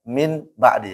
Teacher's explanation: Anda sebutkan iqlab ya kalau nun ketemu. Makanya kalau dibalik ya suara nun jadi mim